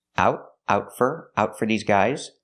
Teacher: We hear the T in out as a stop T.